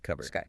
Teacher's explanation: And remember the spelling, C U P B O A R D, but that P is silent.